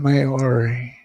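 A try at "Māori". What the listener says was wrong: Maori. Roll the R. Maori.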